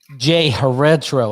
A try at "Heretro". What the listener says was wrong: You completely butchered it. Oh my God. You pronounced G.